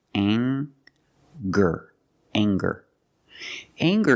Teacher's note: we have the nasal sound plus the hard G the G sound together